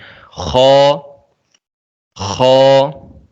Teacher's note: انہیں حروف مستعلیہ کہتے ہیں، یعنی یہ موٹے حروف ہیں۔ خو، خو، یہ حلق کے اوپر والے حصے سے ادا ہوتا ہے، جو ہمارا گلا ہے اس کا جو سب سے اوپر والا حصہ ہے اس سے یہ ادا ہوتا ہے۔